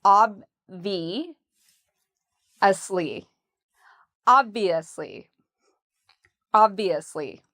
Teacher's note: So we put the stress on the first part, ob, and then we have the V, ob-V, and notice how my lips go under my teeth